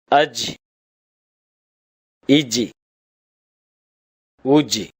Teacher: நாவின் நடுப்பகுதி மேல்முரசை தொடும்போது ஒலிக்கப்பெறுகின்றது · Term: ஜீம்